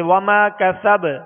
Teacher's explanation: وما کسب با پر زبر ہے، جب ساکن کریں گے تو اس میں بھی قلقلہ ہوگا، مگر حروف قلقلہ میں جب یہ مشدد ہوں ان پر وقف ہو تو مزید جو ہے جو قلقلہ ہے اس کی آواز اور زیادہ واضح ہوتی ہے بنسبت اس کے ساکن ہونے کے، یعنی حرکت والے حرف پر وقف کرنے کے.